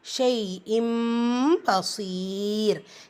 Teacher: இந்த தன்வீனில் இருக்கிற நூனை மீமாக புரட்டி ஓதுறது. ஸோ இந்த இடத்துல குன்னா கண்டிப்பாக செய்யணும். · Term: இக்லாபுடைய சட்டம்